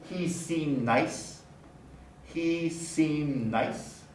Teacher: The D doesn't get pronounced.